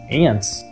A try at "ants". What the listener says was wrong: There's no T there. It's not ants.